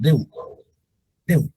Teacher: La E y la U la vocal abierta y la vocal cerrada se pronuncian como una sola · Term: diptongo